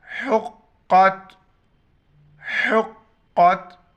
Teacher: حا گلے سے ادا کرنا ہے، قاف موٹا پڑھنا ہے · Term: بڑا قاف